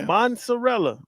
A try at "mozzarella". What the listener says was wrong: It's not mozzarella. There's no N in there.